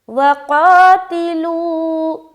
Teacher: قاف میں جو آپ کھینچیں گے آپ کی آواز موٹی کھینچے گی، اور لو میں جب آپ کھینچیں گے تو آپ کی آواز باریک کھینچے گی